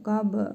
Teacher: B hərfinin üzərində cəzm var. Qalqalə edərək vurğulu tələffüz edirik.